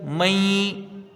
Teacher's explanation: نون کچھ پڑھا گیا اور کچھ نہیں پڑھا گیا، ایک الف کی مقدار یہاں غنہ کریں